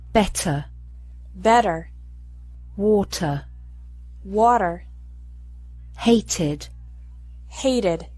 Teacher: In this situation, Americans often pronounce the letter T like a quick D sound. Listen to the difference.